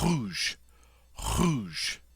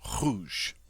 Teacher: In French, this is a very guttural sound. It comes from the back of the throat, and it's almost like you're gargling. And the French R, well, as I can say, it's no English equivalent.